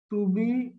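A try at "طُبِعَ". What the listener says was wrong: আচ্ছা, আরেকবার এখানে এই তয়ের উচ্চারণটা কিন্তু আরেকটু মোটা না করলে অনেকটা তায়ের মতো বোঝা যাবে। হ্যাঁ, তুবি গ, তুবি গ।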